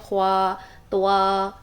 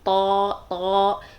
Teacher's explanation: پیچھے سے زبان کی جڑ اور درمیان اوپر اٹھائیں گے، اور تا، آ کی ساؤنڈ میں رکھیں گے، توا نہیں کریں گے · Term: موٹے حروف